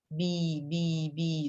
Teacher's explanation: B for a book that's a voiced sound b b b gently touch the upper lower lip that's the voice sound your vocal chords are moving